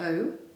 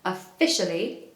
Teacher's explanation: Make sure you make the magic sound at the start, the schwa, okay? So not o.